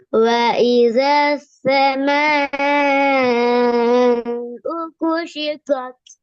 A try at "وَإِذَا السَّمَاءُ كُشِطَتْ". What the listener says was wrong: நீட்டி ஓதுங்க, ராகம் எடுத்து நீட்டி ஓதுங்க, அவசரம் இல்லாம.